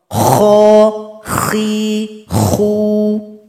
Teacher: tempat keluarnya adalah tenggorokan paling atas bunyinya seperti ngorok Kho khi khu huruf kedua adalah huruf g huruf gho tempat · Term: huruf kho